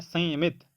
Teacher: जब आप संयमित बोल रहे हैं संयमित तब आपका आवाज सिर्फ नाक से निकल रहा है